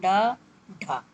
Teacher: अब आता है मूर्धन्य ताड़ित व्यंजन ड ढ